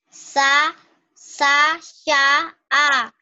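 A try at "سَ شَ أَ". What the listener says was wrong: Sa sya kurang angin. Sa sh kayak ban ban bocor. Sh sa sya a. Sa sya a diulang.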